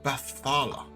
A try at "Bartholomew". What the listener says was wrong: He's missing the Mew. Bartholomew.